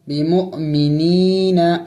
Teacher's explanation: یا مدہ ہے، اس کو ایک الف کا مقدار کھینچنا ہوگا، بمؤمنین۔ اور جب وقف کریں گے، یہاں پہ چونکہ وقف کرنا ہے، آیات ہے اور چونکہ اوپر میم بھی ہے، اس پر وقف لازم ہوتا ہے، وقف یعنی ضروری ہوتا ہے۔